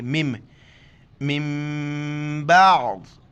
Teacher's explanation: نون ساکن کے بعد جب بھی با آ جائے تو ہم نون کو بالکل نہیں پڑھیں گے، تو میم چھوٹی میم کو پڑھیں گے اور ناک میں آواز پیدا کریں گے. میم میم زیر مم، اس کو من بعض نہیں پڑھنا ہے، اس کو مم پڑھیں گے، مم.